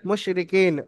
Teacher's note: র নিচে হারাকা তাড়াতাড়ি পড়তে হবে টান দেয়া নিষেধ